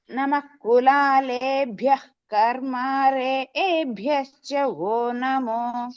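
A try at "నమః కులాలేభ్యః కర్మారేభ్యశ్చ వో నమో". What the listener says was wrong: కులాలేభ్య దగ్గర దీర్ఘస్పరితం లేదు మళ్ళీ చెప్పు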